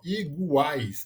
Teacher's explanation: um encontro de uma semivogal, uma vogal e uma semivogal, as 3 numa sílaba só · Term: tritongo oral